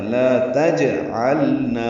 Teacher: لا تجعلنا، لام پہ لام کو ظاہر کر کے پڑھنا ہے، جیم پہ قلقلہ کرنا ہے.